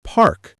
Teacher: in the word park, you use p from the lips, a from the open mouth, with your tongue curled slightly, and k from the back.